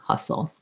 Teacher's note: it's basically almost no vowel in that second unstressed syllable we go into that dark l